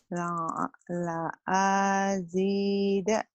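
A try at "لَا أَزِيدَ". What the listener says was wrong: Pendek yang A-nya. La azida.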